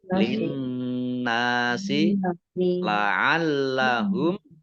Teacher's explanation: lamnya dibaca double, ada tasdidnya